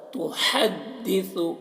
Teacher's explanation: ہا کو حلق سے ادا کر رہا ہے